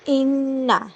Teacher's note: نون پہ غنہ کیا جائے گا، شد ہے